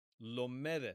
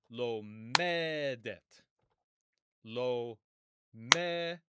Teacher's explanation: And notice where the stress goes. The stress goes on the penultimate syllable, the next to last syllable.